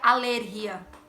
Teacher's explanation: em espanhol a sílaba tônica é no início